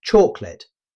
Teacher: Rather than pronouncing all three syllables clearly, most native speakers say chocolate, dropping the middle vowel sound to make the word flow more smoothly.